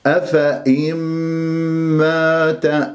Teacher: نون ساكنة جاء بعدها ميم مات راح يكون عندي هنا إدغام بغنة أفإن من غير كز، لا تكزوا على الشفاه حتى لا تشوه